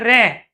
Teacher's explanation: हमारी जीभ क्या कर रही है? कंपन कर रही है, वाइब्रेशन हो रहा है जीभ के अंदर। ये लुंठित मतलब लुढ़क रही है, रे। · तो यहां पर जो र को हम उच्चारण कर रहे हैं र तो जैसे हमने र का उच्चारण किया तो हमारी जीभ क्या कर रही है? कंपन कर रही है। वाइब्रेशन हो रहा है जीभ के अंदर। · रे का उच्चारण जैसे किया तो जीभ लुढ़क गई। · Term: परकंपित